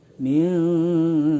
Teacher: Karena nun mati ketemu huruf kaf, dibacanya minkum, ya. Nun matinya tidak ditempel lidahnya ke gusi, tapi ditahan sehingga terdengar suara eng. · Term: Ikhfa